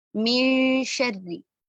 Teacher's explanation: نون ساکن کی آواز کو ہم چھپائیں گے اور شین کے مخرج کے قریب ترین لے جائیں گے